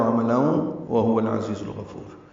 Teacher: عین وسط حلق سے ادا کریں گے